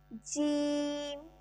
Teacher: حروف شجریہ، وسط زبان اور بالمقابل اوپر کا تالو۔ زبان کا جب درمیانہ حصہ بالکل ڈائریکٹ اوپر تالو سے لگے گا تو اس سے ہمارے پاس جیم ادا ہوگا، اور یہ سیٹ ہے حروف شجریہ۔